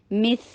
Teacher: اکمل غنہ، میم، مس، اور پھر سا رخاوہ میں سے ہے، وہ سا بہت سافٹ ادا ہوتا ہے سامنے کے 2 دانتوں کے نیچے زبان رکھنے سے، اور رخاوہ ہے تو اس کی آواز چلتی چلی جائے گی